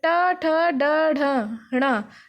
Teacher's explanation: तो ये देखिए ट ठ ड ढ ण, तो ये हमारा किससे आया, ऊपर, हमारी जो जीभ है वो ऊपर मूर्धा में लग रही है।